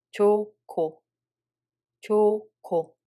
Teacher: When we read it hieut makes a following consonant aspirated. So second syllable becomes '코', not '고' anymore and no hieut sound exists anymore.